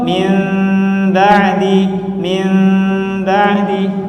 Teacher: Ada gunnah di sana. Ya, ada suara yang muncul dari hidung ketika kita melafalkan itu